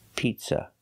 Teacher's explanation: the second vowel, is a short sound like cup and up, not an open sound, ah, pizza. It's not ah like hot and stop. · it's not ah like hot and stop it's uh like cup and up